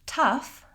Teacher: Lastly, we have the word tough, again, O-U-G-H spelling, and again, totally different sounds. So in the word tough, we have the schwa vowel, and the GH says F. So you could write it as T-U-F or T-U-F-F, and that will probably help you pronounce the word tough correctly.